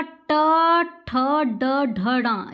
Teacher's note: मूर्धा है ये, क्योंकि इसमें क्या है, जीभ थोड़ी सी मुड़ती है।